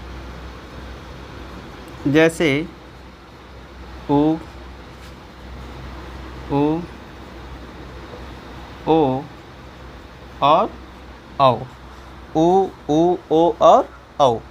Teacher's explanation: हमारी ओठ की आकृति क्या हो जाती है, बिल्कुल वृत्ताकार हो जाती है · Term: वृत्ताकार स्वर